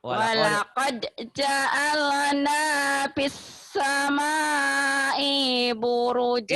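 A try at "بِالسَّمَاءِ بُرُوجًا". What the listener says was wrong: I-nya pendek. I-nya pendek. Bis sama i buru. Iya tapi I-nya pendek sampean.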